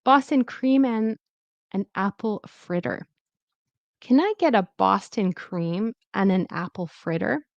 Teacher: very often in connected speech, you might not hear the and, you might hear an or n.